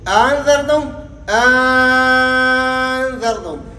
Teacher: یعنی دوسرے حمزے کو الف سے تبدیل کریں گے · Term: ابدال